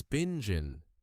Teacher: The little G in binging almost disappears. It's not binging clearly.